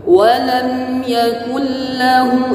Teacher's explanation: ingat di sini memakai huruf kaf, jangan memakai huruf qaf. Walam yakul lahu, tidak, tapi memakai huruf kaf.